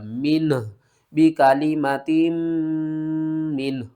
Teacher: last میں ہا کی آواز آئے گی اور یہ ہا بھاری ادا ہوگا